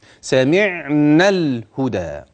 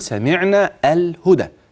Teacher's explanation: يبقى من النون الى اللام مباشره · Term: التقاء الساكنين